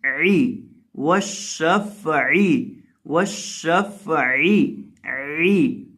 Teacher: عین کو بیچ حلق سے ادا کریں گے